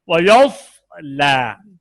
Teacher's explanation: صاد باریک ہو گیا ہے. صاد میں اطباق ہے نا, اور صاد میں استعلاء بھی ہے, بہت پر ہوگا نا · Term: تفخیم